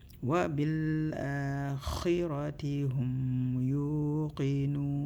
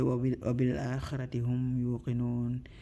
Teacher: Wa bil akhirati hum, mim sukun, we're going to hold for 1 second.